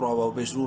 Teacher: منہ بھر کے پڑھتے ہوئے ایک الف برابر لمبا کریں گے، بولڈ کرنا ہے را کو پیش کی وجہ سے، اور لمبا کرنا ہے واو مدہ کی وجہ سے، ایک الف کے برابر